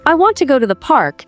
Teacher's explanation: the main words are want, go and park. The other words are softer, I to the. So if I say I want to go to the park, that's more natural than saying each word the same way. · For example, in the sentence, I want to go to the park, the main words are want, go, and park. The other words are softer, I to the. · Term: stresstimed, stress-timed language